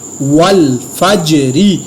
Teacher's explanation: जीम के ऊपर मैंने कलकला किया लेकिन रा की आवाज़ को मैंने बारीक पढ़ा, री नहीं पढ़ा क्योंकि ज़ेर के साथ रा को बारीक पढ़ेंगे, ठीक है।